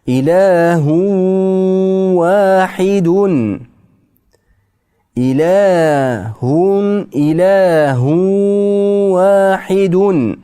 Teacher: Aslida ilahun vahidun. Endi mana tanvinni vovni ichiga kirgizib yuboramiz.